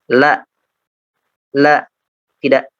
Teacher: Seperti misalkan huruf lam, la, la, tidak ada nafas yang keluar ya. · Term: jahar